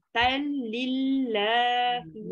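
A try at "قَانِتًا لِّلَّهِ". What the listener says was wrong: Jangan bunyi tanwin langsung. Tal masuk lam terus.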